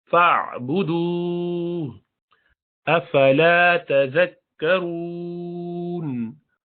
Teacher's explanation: फ़अबुदू, यहाँ वाव को क्यों खींचा, इसलिए कि वाव साकिना ये सेकंड लास्ट है और यहाँ हम रुक रहे हैं वहां पर, और उससे पहले पेश है तो मद्दी है, इसको वाव मद्दिया को खींचा जाता है मद्दुल आरिद बिस्सुकून, रुकने की वजह से।